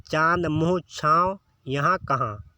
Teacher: जिन वर्णों का उच्चारण मुख और नासिका दोनों से होता है, यानी मुख और नाक से जब हम बोलते हैं तो उन्हें अनुनासिक कहते हैं। यानी अनु का मतलब साथ, अनु जो उपसर्ग होता है ना, तो अनु का मतलब साथ होता है, तो अनुनासिक यानी नाक और मुंह के साथ जब हम बोलते हैं तो वो अनुनासिक होता है।